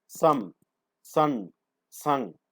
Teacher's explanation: അപ്പോൾ അത്തരം ശബ്ദങ്ങളാണ് nasals എന്ന് പറയുന്നത്. Lung air escapes through the nostrils.